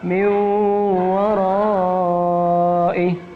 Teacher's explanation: N-nya hilang masuk pada huruf waw.